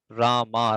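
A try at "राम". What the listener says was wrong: Rama. it is Rama. Okara, it is not R-A-M. It's not Ram. It is Rama.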